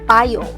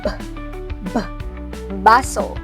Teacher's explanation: ang labing ibaba ay dumidikit sa labing itaas. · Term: panlabi